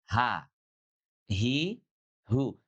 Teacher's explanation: Jadi huruf ha itu keluarnya dari tenggorokan bagian bawah